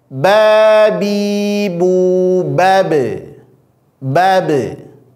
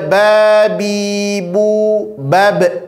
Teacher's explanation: Makhraj ba itu ada di syafatain. Maka pantulkan ba sukun qalqalahnya cukup di bibir saja